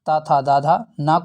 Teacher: तो बता दें इनका जो है उच्चारण स्थान दांतों के सहयोग से होता है। तो ये दंत वर्ण है।